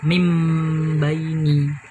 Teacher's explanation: nun matinya itu nggak dianggap, nun matinya itu diganti dengan huruf mim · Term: iklab